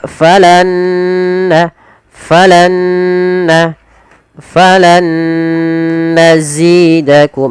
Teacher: Nun yang pertama masukkan nun kedua, kemudian yang langkah kedua ditahan nunnya sepanjang 2 harokat. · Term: idgham bi gunnah